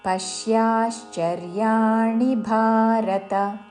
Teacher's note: పశ్యాశ్చర్యాణి తాళవ్యశాలతో, చివరిలో ణి హ్రస్వము. పశ్యాశ్చర్యాణి భారత చివరిలో త హ్రస్వము.